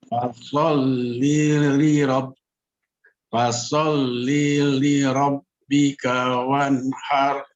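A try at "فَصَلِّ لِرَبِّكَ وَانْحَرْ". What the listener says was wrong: Sebentar, langsung saja disambung ya. Fasolli li rabb. Langsung. Li rabb.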